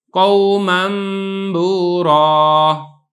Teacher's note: اب یہ نون تنوین کے بعد با آ گیا تو آپ نے یہاں پہ اس کو نون نہیں پڑھنا، میم پڑھنا ہے